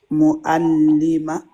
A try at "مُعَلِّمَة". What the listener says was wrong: L'aïn, tu l'as pas bien prononcé. Mu'allimatun.